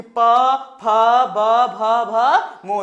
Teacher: उसके बाद देखिए प वर्ग क्या होता है होंठ, देखिए आपस में होंठ सटेगा